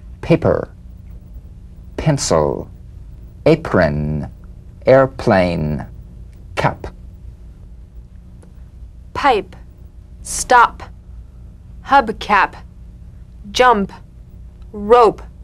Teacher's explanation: Cognate B, the unvoiced labial stop consonant. The whispered tap of this drumbeat P is played with a light springing apart of the lips, just like for the B. On the springing away, feel a B in a whisper without any puff of air.